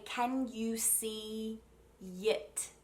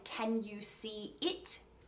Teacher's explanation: i'll put a y in between to make it flow really smoothly